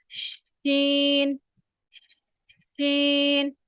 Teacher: اور شین کی آواز ایسی ہے کہ شین کی آواز آپ کے پورے منہ میں پھیلتی ہوئی آپ کو محسوس ہوگی